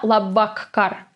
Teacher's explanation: the K, the sound K, sounds as if there were 2 letters K in this word